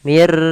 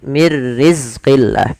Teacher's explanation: maka dia nunnya masukkan ke ro tapi tidak ditahan maka dinamakan dengan bila ghunah tidak boleh ditahan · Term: idgham bila ghunah